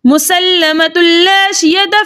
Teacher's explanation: ता के ऊपर दो पेश की तनवीन है और दो पेश की तनवीन के बाद लाम रॉ में से लाम आ रहा है, तो यहाँ पर दो पेश की तनवीन को लाम से मिला के इस तरह पढ़ेंगे कि दोनों एक साथ मुशद्दद अदा हो लेकिन गुन्ने के बगैर, और इस कायदे का नाम होगा इदगाम बिला गुन्ना।